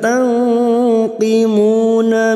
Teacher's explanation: nun sukun bertemu qaf ikhfa hakiki, kita samarkan bunyi nun sukun dan mendengung selama 3 atau 2 harokat